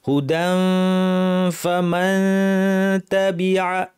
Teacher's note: তানউইনের পর ফা আছে, দাঁত ঠোঁটের উপর এনে ফা বলার জন্য মুখ রেডি, নাক থেকে গুন্না